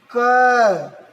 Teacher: जब आप क बोल रहे हैं तो क वर्ड के साथ अ अपने आप निकल रहा है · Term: व्यंजन